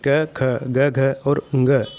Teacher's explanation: क, ख, ग, घ और ङ, इनका उच्चारण स्थान कंठ होता है